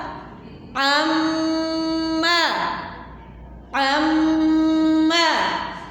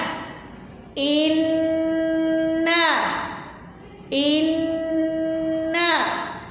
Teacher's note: میم مشدد اور نون مشدد جب بھی ہم پڑھیں گے اس پر ہم غنہ کر کے پڑھیں گے، اس کو تھوڑا سا ہم زیادہ وقت دیں گے، زیادہ ٹائم دے کے پڑھیں گے، ٹھیک ہے؟